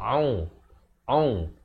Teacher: ain di pertengahan kerongkong